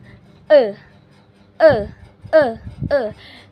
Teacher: Nah, berarti benar-benar vokal E ini lidahnya tuh ada di tengah. Nah, posisi mulutnya itu sedikit terbuka, semi terbuka. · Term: vokal madya tengah